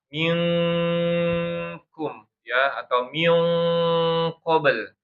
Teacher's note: nun sukun atau tanwin bertemu dengan huruf atau makhrajnya yang sangat jauh dengan nun, yaitu huruf qaf sama kaf, sehingga bunyinya itu eng banget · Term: ikhfa